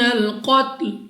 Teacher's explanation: قاف مستعلیہ میں سے ہے، موٹا پڑھنا ہے منہ اور آواز کو کھول کر، اور وقف میں لام کو ساکن کر دیں گے۔